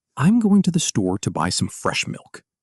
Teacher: Notice how going, store, buy, fresh, and milk carry the melody while the rest blend together softly. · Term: stress timed, natural rhythm